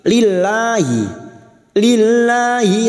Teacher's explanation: lillah lam jalalah yang sebelumnya kasrah kita baca tipis atau tarkik. Lillahi, lillahi lahnya kita panjangkan 2 harokat.